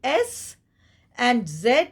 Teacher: it's pronounced from the alveolar region just you know behind the upper teeth you have the alveolar Ridge and you're pronouncing s and Z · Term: alveolar fricatives